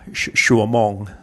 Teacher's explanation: when I hear Thais say certain words, it sounds more to my ear like SH rather than CH. For example, the Thai word for hour, shuamong, sounds more to me like an SH than a CH.